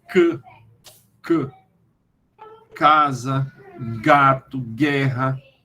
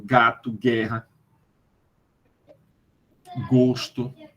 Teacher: Ou palato mole, velo palatino. E aí, o dorso da língua se eleva na direção do palato mole. O dorso da língua aqui é a parte ativa, o palato mole é a parte passiva. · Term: velares